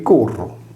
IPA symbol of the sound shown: r